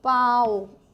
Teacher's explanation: é mais fácil pau ó a e o u ou seja nós temos uma vogal mais uma semivogal